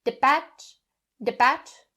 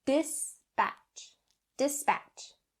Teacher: the s sound don't drop it or skip it don't say de patch de patch not correct dispatch dispatch the